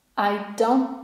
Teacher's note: Mamy na końcu ty, ale obok jest think, które również jest na ty, więc z jednego ty musimy zrezygnować.